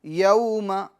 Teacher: یوم، یہ واو لین ہوگا، یوم میں واو لین ہوگا، ٹھیک ہے، اور حروف لین کو نرمی سے پڑھنا ہے، بغیر کھینچے، بغیر جھٹکا دیے